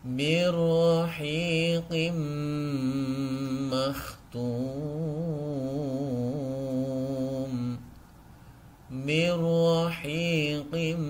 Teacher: nun sukun bertemu dengan huruf ro cara membacanya memasukkan nun sukun ini ke dalam huruf ra seakan-akan tidak ada nunnya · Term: idgham bila ghunna